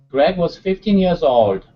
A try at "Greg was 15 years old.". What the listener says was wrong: Almost instead of old. Okay, keep the mouth closed a little bit. Old. Greg was 15 years old.